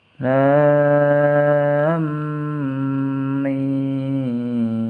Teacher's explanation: Di sini lamnya harus dibaca panjang. Alif lam, mimnya bertasdid dibaca dengung.